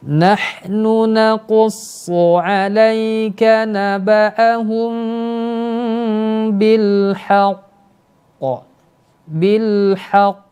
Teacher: Nah, kemudian berikutnya berhenti pada huruf qalqalah yang bertasydid. Ini termasuk qalqalah kubra, qalqalah dengan pantulan paling kuat.